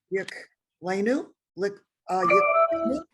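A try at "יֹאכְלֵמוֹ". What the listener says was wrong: You got the yoch le. Look at the last vowel. Yoch le.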